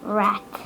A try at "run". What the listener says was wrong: Rat? That's not an A. That's a U. What does a U make?